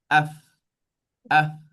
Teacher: Nampak bibir saya yang bawah ni yang bahagian dalam dia menyentuh bahagian hujung gigi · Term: huruf fa